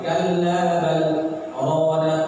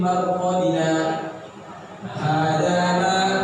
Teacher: Berhenti bernapas seukuran 2 harokat. Ya, tertahan nafas seukuran 2 harokat. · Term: saktah